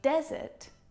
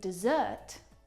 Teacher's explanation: There is a slight pronunciation difference here, and it's simply a matter of syllable stress. In desert, the stressed syllable is the first syllable. In dessert, the second syllable is the stressed syllable.